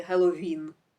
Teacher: Він з наголосом на останньому складі Геловін